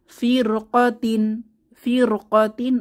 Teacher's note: ফির, র মোটা করে পড়তে হবে, যেহেতু পরবর্তী হরফটা কফ, এটা মোটা হরফ এসেছে, তো আমরা পড়ব ফিরকাতিন, ফিরকাতিন অর্থ দল।